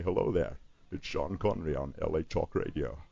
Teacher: so you put a little bit of a welsh accent you you loosen up some dentures that he has so that your s's sound like sh's